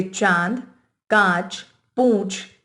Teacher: इसे बोलते समय हवा मुंह तथा नाक दोनों से निकलती है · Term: अनुनासिक